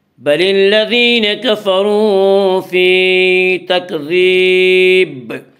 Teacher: تو تکذیب میں جب ہم وقف کریں گے تو دال ساکن، با ساکن ہو جائے گا، اور جب با ساکن ہوگا تو با میں قلقلہ ہوگا۔